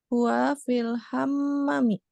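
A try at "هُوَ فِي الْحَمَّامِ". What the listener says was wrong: Hamami. Yang dipanjangin mimnya. Ma, ada alif madia. Huwa fil hamami.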